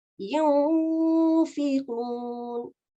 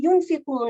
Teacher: We are hiding the sound of N, the N sound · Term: Ikhfa